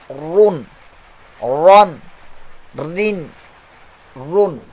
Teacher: بہت زیادہ ہو جاتی، ویبریشن مخرج پر اتنی نہیں ہونی چاہیے، اس کے جو ادائیگی ہے اس کے مخرج پر ہلکی سی کپ کپاہٹ ہوتی ہے ، لیکن اتنی ساؤنڈ نہیں پیدا ہو جائے کہ موٹر سائیکل